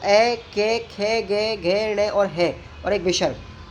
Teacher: कंठ से बोले जाने वाले वर्णों के उच्चारण स्थान